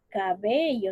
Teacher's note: Sería la mayor fuerza de voz en la penúltima sílaba.